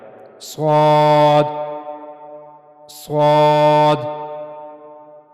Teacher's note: जबान की नोक ऊपर के अगले दो दांतों के अंदरूनी हिस्से के पास जाएगी। दरमियान में थोड़ा सा फासला रहेगा। वहां से स्वाद अदा किया जाएगा।